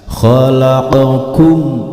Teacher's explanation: sukun bertemu dengan huruf wau maka ini dinamakan bacaan izhar syafawi huruf mimnya harus dibaca jelas tidak boleh dipantulkan serta tidak boleh didengungkan